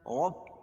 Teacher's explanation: را کو پر پڑھیں گے، کیوں کہ را کے اوپر زبر ہے